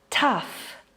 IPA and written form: tʌf (Tough)